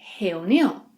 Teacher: First, the R sound. Whenever R is at the beginning of a word, it is produced in the back of our throat, just like the H sound in English.